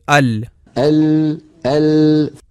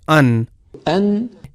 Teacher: आवाज का खुरूज नहीं है नून का मखर अन अन अन ऊपर वाले तालू को जब लाम के लिए जुबान लगती है उससे थोड़ा नीचे नून की अदायगी होती है